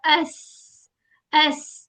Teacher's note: बारीक आवाज आनी है, सीटी या सफीर कहते हैं इसको, ठीक है। सफीरिया भी इसको कहा जाता है, यानी सीटी वाला, ये इसकी स्पेशल क्वालिटी होती है, ठीक है।